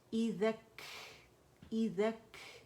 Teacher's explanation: ہمس کرتے ہیں تاکہ یہ کاف جو ہے یہ واضح ہو سکے